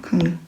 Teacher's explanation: 받침 이응 뒤에 리을이 연결됐어요. 이때는 리을을 니은으로 발음합니다. 그래서 발음은 강릉이 아니라 강릉이 되겠죠. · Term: 비음화